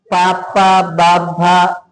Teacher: పెదువుల సహకారంతో పలుకుతున్నాం కాబట్టి ఓషట్యాలు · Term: ఓష్ఠ్య